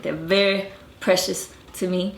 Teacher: You notice they don't even say the R's intervocalically.